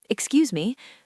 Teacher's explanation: If you drop your voice and say, Excuse me. with a flat tone, it sounds angry.